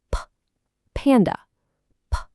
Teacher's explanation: The very first sound is voiceless. It's just air.